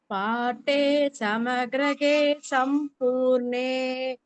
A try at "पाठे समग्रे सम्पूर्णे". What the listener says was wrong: समग्रे only समग्रगे illa समग्रे सम्पूर्णे